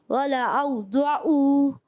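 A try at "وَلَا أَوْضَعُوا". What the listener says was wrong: ولا اوضعوا آپ کی بھی عین کی آواز آئی ولا او پڑھنا او نہیں پڑھنا ولا اوضعوا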